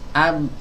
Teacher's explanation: pastikan huruf ba-nya ini tipis